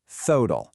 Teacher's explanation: That initial aspirated th is exactly what you need for a word like total. So many of us say a flat total, but a native speaker says thotal.